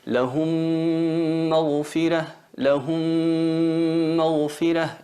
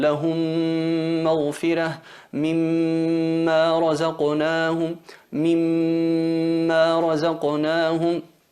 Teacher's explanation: ¿Por qué es labial? Porque la M se articula en los labios y esa fusión se produce en la parte de los labios aplicando la nasalización. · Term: fusión labial